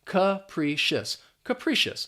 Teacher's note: That first syllable has the schwa sound, that sound, and then the pri is just pronounced as pre.